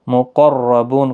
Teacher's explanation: مقربون، قاف پر پڑا جائے گا، مستعلیہ کا حرف ہے، را بھی پر پڑا جائے گا زبر کی وجہ سے، بو واو مدہ ہے، نون ساکن پڑا جائے گا وقف کی صورت میں، 3 سے 5 الف کی مقدار کے برابر کھینچ کر وقف کریں گے